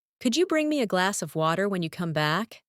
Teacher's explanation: and glass of sounds like glassa.